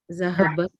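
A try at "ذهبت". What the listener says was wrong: Doctor, you could say dhahabat is correct because it's talking about the mother. It's fine.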